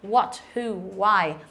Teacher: Mà chúng ta đọc bỏ luôn cái chữ H này đi và chúng ta đọc là what, who, why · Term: âm câm